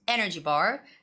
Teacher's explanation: You have to stress the first noun, energy bar. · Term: compound nouns